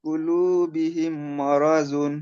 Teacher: মিম কে মিমের সাথে মিলিয়ে অর্থাৎ এই মিমটা এই মিমের ভিতরে ঢুকে যাবে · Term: ঈদগাম